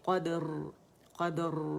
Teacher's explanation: قد قلقلہ باریک ہوگا، قاف موٹی ہوگی